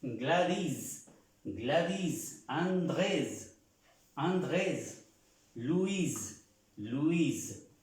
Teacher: las veces se pronuncia haciendo un acento en esa última sílaba